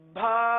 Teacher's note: मिसाल के तौर पर भा यानी बा के साथ हा की आवाज निकाली जाती है